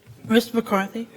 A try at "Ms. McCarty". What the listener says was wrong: It's Miss McCarty, not Mr. McCarthy.